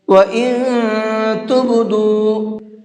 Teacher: اس نون کے اندر اخفا کر کے پڑھیں گے، یعنی کہ آواز کو ناک میں چھپا کر کے پڑھیں گے